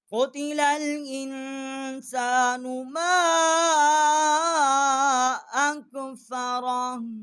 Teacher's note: قاف جو ہے یہ بڑی قاف ہے، اس کو جو حلق کا درمیان والا حصہ ہے قوے کے متصل، جب زبان اوپر کے تالو سے ٹکرائے گی تو اس قاف کا جو ہے وہ مخرج ہے، بڑی قاف ہے۔